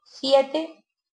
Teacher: consiste en pronunciar el sonido S como Z por ejemplo se dice siete en lugar de siete y esto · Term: ceceo